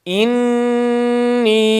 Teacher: Hemzeye basıyoruz. Nün şeddesini fazlaca 1,5 elif miktarı tutuyoruz ve 4 elif miktarı uzatıyoruz.